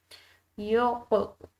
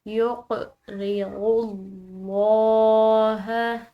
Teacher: لفظ اللہ کی لام موٹی ادا کی جائے گی کیونکہ غود کی پیش ہے